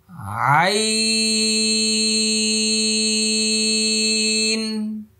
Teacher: এই যে গলা, হলক, কণ্ঠনালী এর মধ্যখান থেকে 4 আলি পরিমাণ লম্বা হবে।